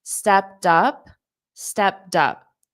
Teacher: So you can hear a little bit of a soft D or even potentially a soft T sound.